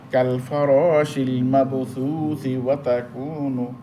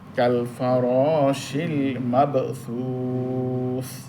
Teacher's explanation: অর্থাৎ এখানে এত মদ ছিল না, থামার কারণে মদ হইতেছে, থামার কারণে বেশি মদ হইতেছে, নাহলে এক আলিফ ছিল, থামার কারণে 3 আলিফ হইতেছে। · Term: মধ্যে আরদি